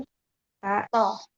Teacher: Jadi ujung lidah menyentuh tempat tumbuh gigi seri atas.